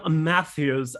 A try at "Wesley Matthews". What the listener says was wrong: No, you said his name with like 8 S's. You were like Wesley Matthews. I think you're just covering up that a mispronunciation.